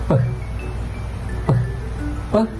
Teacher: it is stop explosive but with stronger air came gushing up from your mouth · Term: voiceless